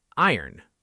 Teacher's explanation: We say iron. The O almost disappears.